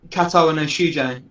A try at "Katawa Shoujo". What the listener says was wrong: Katawa Shoujo. You just added like 3 extra syllables.